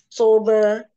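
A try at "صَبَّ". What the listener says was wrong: Sobnya tebalkan. Kayak kurang ya.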